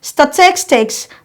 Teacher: The syllable taking the stress is the tis, so you have to emphasize on your tis, on the syllable's tis when pronouncing this word.